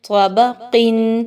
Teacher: اب اس میں یاد رکھیے تا کی طرح نہیں پڑھنا، طا کو، طا خوب موٹا پڑھا جائے گا، تا باریک پڑھی جاتی ہے